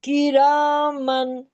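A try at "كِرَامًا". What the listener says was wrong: ये रॉ, रॉ को बड़ा मोटा करें ना।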